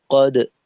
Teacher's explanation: দালের কলকলায় clearly বোঝা গেছে যে ঠোঁট খোলা ছিল